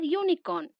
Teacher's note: Here, the vowel U has a consonant sound or the sound of the letter Y.